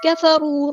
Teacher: کاف ہمارا باریک لائٹ لیٹر ہے، فا بھی باریک لائٹ لیٹر ہے